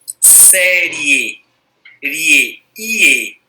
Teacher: Série, ie, começa fraco, termina forte. Começa com uma semivogal, termina com a vogal. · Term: ditongo crescente